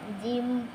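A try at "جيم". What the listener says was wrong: হ্যাঁ, জিমটা একটু দ্রুত উচ্চারণ করতে হবে। জিম।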